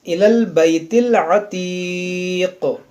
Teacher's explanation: یہاں رکیں گے، وقف کریں گے تو یہاں پر قاف میں قلقلہ ہوگا